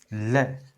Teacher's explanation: जीविया के बगलो से हवा निकलती है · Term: पार्श्विक व्यंजन